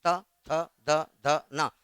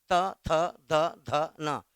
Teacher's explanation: जीभ जा रहा दांत को टच कर रहा है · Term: त वर्ग